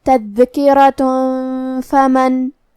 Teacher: حرف الراء پہ زبر ہے تو را کا حکم ہے تفخیم، را کو موٹی آواز میں پڑھیں گے، آخری میں تا پہ تنوین پیش ہے، پھر حرف الفا ہے کلمت فمن، یہاں حکم ہے اخفاء تو ہم یہ حکم کو غنہ کے ساتھ ادا کریں گے، تذکرۃ فمن۔